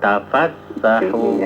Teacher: Tasdidnya jangan di fa tapi di sinin.